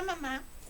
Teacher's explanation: mis cuerdas vocales suenan las cuerdas vocales y la emisión de la salida del aire es por la nariz es un sonido sonoro nasal y labio labial vila bien porque